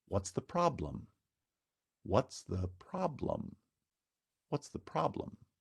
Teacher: Or the last example, now again a WH question, so also has falling intonation, but this time the word problem is stressed on the first syllable, so the placement of the accent is on problem, and you get a step, falling step intonation